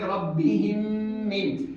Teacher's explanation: میم ساکن کے بعد میم آیا، اس لیے ناک میں آواز لے جائیں گے، غنہ کریں گے ربہم من۔ اسی طریقے سے اگر با آ جائے میم ساکن کے بعد میں تو با کی مثال یہ رہی، ربہم بہم، ربہم بہم، یہاں پر میم ساکن کے بعد با آیا۔